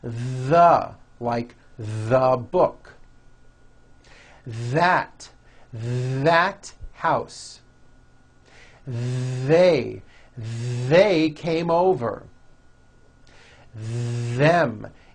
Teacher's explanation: they should all be voiced and all made with your tongue coming through your teeth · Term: voiced th